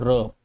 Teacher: जब हम र बोलते हैं ना बच्चों, र, तो हमारी जीभ ऊपर से हल्की सी घूम जाती है, मुड़ जाती है। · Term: लुंठित व्यंजन